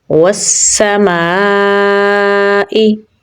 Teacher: इसे हम 3 से 4 सेकंड के लिए लंबा पढ़ेंगे। इसे मद्दे मुनफसिल कहा जाता है